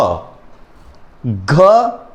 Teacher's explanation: घ घ का उच्चारण करने पर हमारी जो तंत्र है उसमें हल्का-सा कंपन होता है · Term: घोष